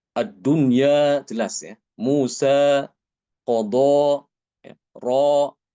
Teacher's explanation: itu tidak ada sama sekali imalah. Semuanya dibaca fathah ya.